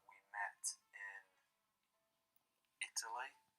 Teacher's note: he doesn't drop the T's in met